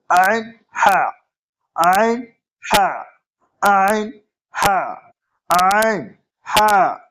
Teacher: এটা উচ্চারিত হয় আইন আর হা গলার মাঝখান থেকে, হালাক বা কণ্ঠনালীর মাঝখান থেকে।